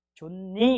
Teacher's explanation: 히읗이 종성이 오고 니은을 만나면 존니 이렇게 됩니다. · 그냥 히읗이 니은을 만나서 니은으로 교체됐다